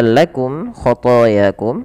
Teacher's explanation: ada mim mati bertemu k. Maka ini kita namakan dengan bacaan izhar syafawi. Jelas suara mimnya.